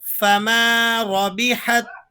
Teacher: را موٹی پڑھی جائے گی، را پر اوپر کی حرکت ہے